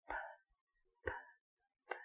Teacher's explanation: So the P sound is a kiss with no vibration.